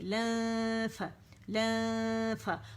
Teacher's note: نون ساکن پہ اخفا جو ہے غنہ شروع کر دیں گے، تھوڑی آواز منہ سے زیادہ ناک سے آئے گی اور حرف اخفا کے قریب جائیں گے فا کے مخرج کے،